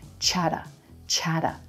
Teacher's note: chocolate and the black cat ah vowel it's a quick syllable then our T's become flap T sounds like a quick D · It's a quick syllable, cha, cha. Then our T's become flap T, sounds like a quick D, and the vowel in that second syllable is a schwa, so it's super quick.